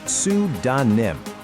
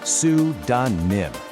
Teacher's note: you want to put the stress right on that first syllable.